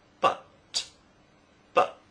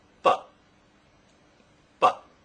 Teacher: in informal speech the T sound is often replaced with the glottal stop